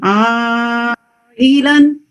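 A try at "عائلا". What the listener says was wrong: ये जो आइलन में इसमें 4 हरका लॉन्ग पड़ेंगे. ठीक है, तो इसको इसका टाइम फिक्स कीजिएगा. लेकिन ये जो ई है ना, ये हमें इसकी हमजा की साउंड लानी है.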